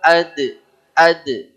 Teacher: mantul dia huruf dal namanya qalqalah